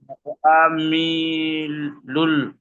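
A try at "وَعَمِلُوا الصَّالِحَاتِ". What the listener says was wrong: লুস, লাম সোয়াদ পেশ। লাম গুলো কেন ধরছেন? লাম তো কিছু নেই, তো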